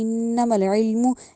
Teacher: علم جو عین ہے اس کو حلق سے نکالنا ہے ، علم نہیں کہنا، الف کی ساؤنڈ نہیں دینی، انما العلم